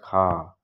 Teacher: अघोष महाप्राण में आता है खा